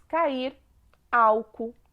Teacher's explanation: as vogais estão juntos na mesma palavra porém em sílabas diferentes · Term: hiato